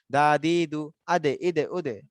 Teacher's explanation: দা দি দু হরকতের সময় এই কলকলা হয় না, সাকিনের অবস্থায় হয়